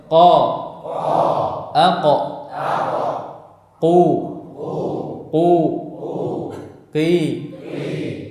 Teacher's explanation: Makhraj yang kelima adalah pangkal lidah bertemu dengan langit-langit lunak. Itu makhrajnya huruf qaf.